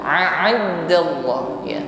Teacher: hamzah sifatnya syiddah, kuat tekanan hurufnya. Sedangkan ain yang sebelahnya sifatnya agak lemah ya, tawassut, lunak ya. Hamzah ucapkan dengan tegas a.